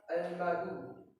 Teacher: Kemudian yang kelima ada hukum matoi yang bunyinya al-madu karena huruf dal berharokat doma diikuti waw sukun sehingga membacanya panjang 2 harokat